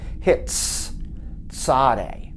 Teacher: It's an S sound, but a hissing S sound, almost like a TS sound, as in hits, tzade. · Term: Tzadeh